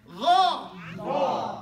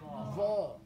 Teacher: Okay, so you don't have to go, but no, I'm saying, but it's from the inside, because sometimes we think it's to do with our lips, and it has to do with the tongue and the jaw. The jaw drops, the tongue turns into a curve. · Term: cup